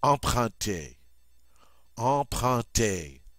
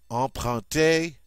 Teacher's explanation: I love it because it's got those two nasal sounds.